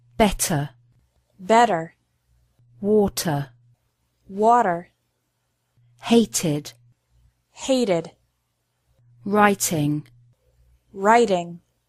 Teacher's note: Americans often pronounce the letter T like a quick D sound